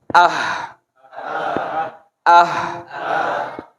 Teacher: Tenggorokan paling bawah, tapi dekat sama dada. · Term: hamzah